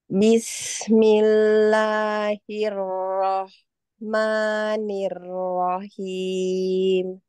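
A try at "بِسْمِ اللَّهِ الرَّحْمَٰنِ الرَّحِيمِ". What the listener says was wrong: Nah, sudah bagus basmalahnya, hanya di sinnya kurang tipis ya. Sin tipis dan ada sifat sopir. Bismillahirrahmanirrahim. Kemudian kasukunnya jangan putus ya.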